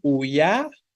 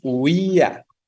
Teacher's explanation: Decimos uya, decimos huía, ¿no? Vean que la fuerza va sobre la I de forma concreta. Y entonces, en esa comparativa de que la fuerza va sobre la I, pues entonces es la que suena fuerte, la cerrada, lo que hemos dicho. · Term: hiato